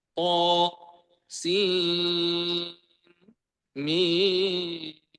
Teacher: tidak diimalahkan thnya, tetapi th sin mim dibaca izhar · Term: izhar dan sakta